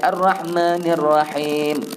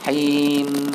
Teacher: mim hujung tu bagi lama sedikit, separuh harakat